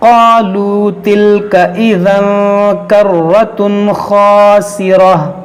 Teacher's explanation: तनवीन के बाद हुरूफ़ हलक़ी है, तो यहाँ पर हम इज़हार करेंगे, यानी यहाँ पर गुन्ना नहीं करेंगे